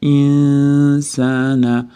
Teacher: Nun s'ga ixfa bo'lyapti. S'da chiqadigan joyga yashiramiz. Insana. S'dan keyin mattabiy kelyapti.